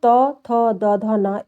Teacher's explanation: जब हम इसका उच्चारण करते हैं तो दांत पे हमारे जीभ जाके छूती है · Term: दंत स्पर्श व्यंजन